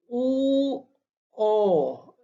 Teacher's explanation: Jadi bila u, o, lidah terletak ke belakang. Okey, u lidah terletak ke belakang.